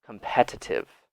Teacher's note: British English uses more of a T sound